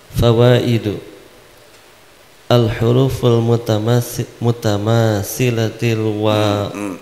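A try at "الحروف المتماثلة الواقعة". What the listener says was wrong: jangan ti. Sifatul hurufu al-huruful mutamasilatul waqi'atu. Gitu.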